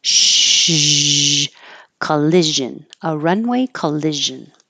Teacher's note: remember to make shh, like you're telling someone to be quiet, and then use sound, use voicing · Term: zh sound